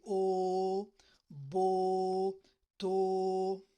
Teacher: You're mixing a bit of a Damma or a bit of a Waw with the Fatha and with the Alif. So if we circle our lips more, like here, you could say, for example, 50-50, then the sound will be O, Bo, To, like in between.